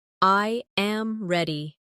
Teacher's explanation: The voice falls naturally at the end. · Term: intonation